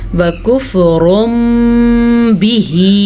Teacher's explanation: را کو پر پڑھیں گے کیونکہ را کے اوپر 2 پیش ہیں